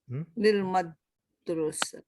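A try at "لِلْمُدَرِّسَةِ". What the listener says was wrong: Lil mudarrisah. Ada tasdid di sini.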